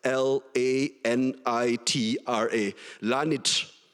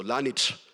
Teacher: in Malagasy, all final vowels except E or O, I think, are voiceless